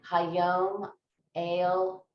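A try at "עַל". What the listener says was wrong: Not ale.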